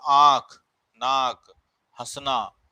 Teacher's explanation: अनुस्वार, अनुस्वार जो नाक से उच्चारण किया जाता है। अनुनासिक वह जो मुख और नाक दोनों से उच्चारण करता है